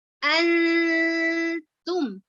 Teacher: Nun dan ta adalah bacaan ikhfa, artinya samar-samar ya, dibaca samar